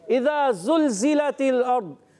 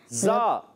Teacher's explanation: ज़बान की नोक और दोनों दांतों के अंदरूनी किनारे से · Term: ज़ा का मखरज